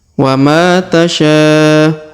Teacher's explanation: Huruf ma perhatikan dipanjangkan 2 harokat karena terdapat alif di depannya